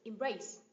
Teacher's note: Embrace, động từ có hai âm tiết, nhấn âm tiết thứ hai.